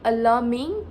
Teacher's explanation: he lengthened the vowel a in alarming to show the concern of this Islamophobia issue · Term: voice lengthening